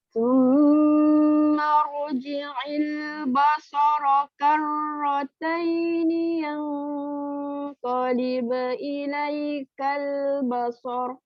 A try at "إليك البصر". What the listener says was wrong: Ilaikal basar. Ba tu lagi rendah. Lentangkan lagi. Jangan terpengaruh dengan sad. Ilaikal basar.